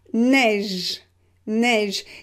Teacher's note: You can hear that the last sound is j. It is not e, it's j. So neige, we pronounce it e, open, neige.